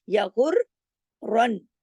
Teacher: غین کو آپ نے ہیوی پڑھنا ہے، را کو ہیوی پڑھنا ہے، اور را پہ تشدید ہے ، دو را ہیں، دو نون ہے، یا غر رن، دونوں